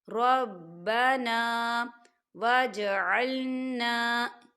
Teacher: ربنا، ربنا، الف مدہ ہو رہا ہے، خالی الف سے پہلے زبر ہے تو یہاں دو حرکت کے برابر کھینچیں گے